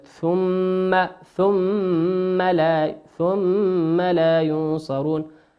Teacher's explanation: الميم في كلمة ثم ميم مشددة تغن بمقدار حركتين. وكلمة ينصرون النون في كلمة ينصرون هي نون ساكنة أتى بعدها حرف الصاد، والصاد من حروف الإخفاء.